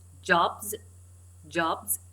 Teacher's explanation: But the b sound is voiced, so the s plural is pronounced as z.